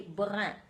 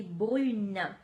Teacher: So if it's a UN, I'm going to say brun. But just putting that E at the end for feminine, what happens is that nasal disappears